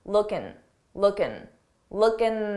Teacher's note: it's very common to take a word that ends in i-n-g and drop the G sound that g sound and just end it on um looking looking